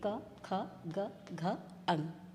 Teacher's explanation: इन सबका उच्चारण कंठ से होता है।